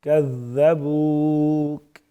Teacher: واو مدہ ایک الف کے برابر پڑھیں گے. · ذال نرم پڑیں گی لیکن جو تشدید آئی ہوئی ہے اسی کی مضبوطی بھی ساتھ میں ہوگی